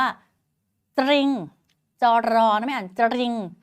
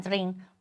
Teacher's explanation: ครูอ่านจริงโดยไม่ออกเสียงรอเรือเลย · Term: ควบไม่แท้